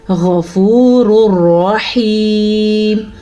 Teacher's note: غین کو پر پڑھیں گے کیونکہ غین ہمیشہ پر پڑھا جاتا ہے. را دونوں پر پڑے جائیں گے کیونکہ اس را کے اوپر پیش ہیں اور اس را پہ زبر ہے.